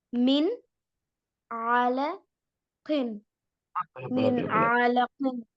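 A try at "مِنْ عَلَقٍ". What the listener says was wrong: ஆல ஜாயின் பண்ணல. ஆலகின்.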